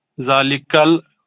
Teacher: ہاں زا پہ کھڑا زبر ہیں 2 حرکت. ذالکل کاف کو لام کے ساتھ ملا کے پڑھنا ہے